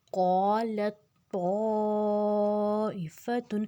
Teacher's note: اور تا جو ہے وہ موٹا ہے تو لام جو ہے ڈائریکٹ تا کے ساتھ مل جائے گا اور تا کو ہم نے موٹا رکھنا ہے. اس میں تے کی آواز نہیں لگانی تا کی لگانی ہے. · حمزہ کے پچھلے جو مد ہے اس کو ہم نے 4 حرکت لمبا کرنا ہے.